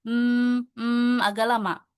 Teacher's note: bacanya dengan tahan dulu sambil didengungkan dengan tempo yang dipanjangkan ya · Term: idgham mimi